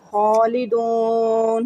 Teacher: خا کو میں نے پر پڑھا، ایک الف کی مقدار لمبا کیا. خالدون، واو ساکن سے پہلے پیش ہے تو واو مدہ بنایا.